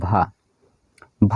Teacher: ओष्ठ व्यंजन भी है, महाप्राण भी है, घोष है, स्पर्श भी है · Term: स्पर्श घोष महाप्राण ओष्ठ व्यंजन